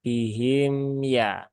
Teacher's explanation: itu mimnya kan sifatnya tawasud ya bukan syidah maka di ini ya dilembutkan ya di bukan apa bukan dilembutkan tapi jangan disidahkan ee tapi dialirkan